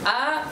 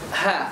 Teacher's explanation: Ya, a tekan, h lepas. A tidak menghembus nafasnya, h hembuskan nafasnya. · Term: hamzah dengan h